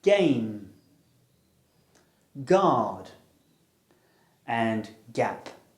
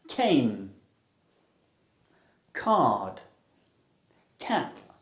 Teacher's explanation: These sounds are produced by stopping and releasing airflow with the back of the tongue almost at the top of the throat. G is voiced and k is aspirated.